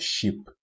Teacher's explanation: Shin is pronounced using the middle of the tongue and opposite this region from the roof of the mouth